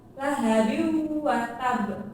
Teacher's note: cara bacanya yaitu melebur tanwin bertemu dengan huruf wawu disertai dengan dengung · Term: idgham bikunah